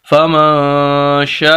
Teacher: شین کا الف اس پر مد، اور یہ سب سے بڑی مد ہے، 5 الف کے برابر ہم نے شین کو لمبا کرنا ہے